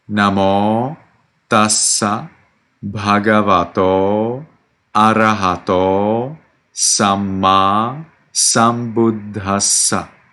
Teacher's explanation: The vowel at the end of Namo and then Bhagavato and Arahato is actually long, and it needs to be clear from your pronunciation.